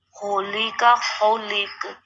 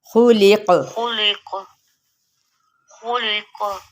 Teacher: موٹا قاف ہے، اور ہم نے یہاں پہ قلقلہ بھی کرنا ہے اسے ساکن کرتے ہوئے، اور قاف کو موٹا بھی ادا کرنا ہے۔